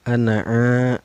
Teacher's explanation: karena ada alifnya yang nyambung nih sebelumnya berbaris Fatah ya Hai cara bacanya dipanjangkan dua harakat ya